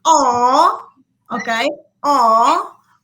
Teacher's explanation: is a back vowel why because the tongue is at the at the back of the uh of the mouth and that the um the mount is open that's why we